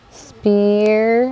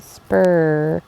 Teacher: i kind of hear the long e sound right we don't hear the er sound it's not spur it so kind of a different sound there